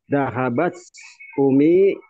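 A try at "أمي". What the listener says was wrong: Ummi pakai tasdid ya. Ya, jadi Ummi ya.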